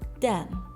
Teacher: The plosive d sound is substituted for the fricative th.